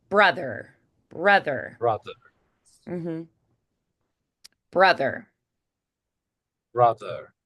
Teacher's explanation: really pop the air out of the B on your way to the r